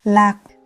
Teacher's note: One syllable, slow, lạc, heavy falling tone